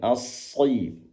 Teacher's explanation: shad merupakan huruf yang memiliki sifat itbaq. Bilamana dibaca walaupun dia kasrah tetap terdengar tebal.